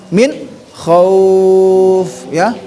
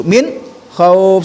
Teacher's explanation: Min tidak dibaca dengung karena mendapat sama kho. Kho itu masuk izhar jelas.